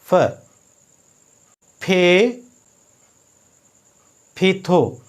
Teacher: फे की आवाज़ निचला होंठ और ऊपर वाले दांत मिलाने से ही आवाज़ बनती है।